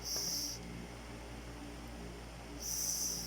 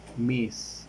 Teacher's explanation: According of voicing, the sound that is voiceless. According of the place of articulation, it is alveolar, and according to the manner of articulation, it is fricative.